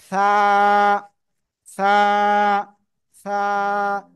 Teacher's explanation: জিহ্বার আগা উপরে দুই দাঁতের আগা লাগাবো লাগিয়ে হালকা বাতাস বের করে নরম করে এক আলিফ টেনে উচ্চারণ করব